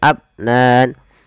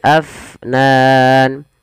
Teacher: alirkan nafasnya jangan abnan tapi Afnan